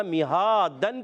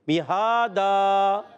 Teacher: 2 زبر کی تنوین کو وقف میں ہم الف سے بدل دیتے ہیں، تو پڑھیں گے الف مدہ ہو جائے گا میہادن کی بجائے میہادا۔ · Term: وقف بالابدال